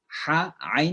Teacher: Kemudian yang biasa juga kita salah ha tentunya. Ini ain dengan ha itu satu tempat keluarnya. Tenggorokan tengah ya.